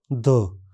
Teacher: इस ध्वनि के उच्चारण में स्वर यंत्र कंपन करता है। मुलायम तालु ऊपर उठकर नासिका मार्ग को बंद कर देता है। जीभ का सिरा दांतों के पिछले स्थिर उबर को छूता है।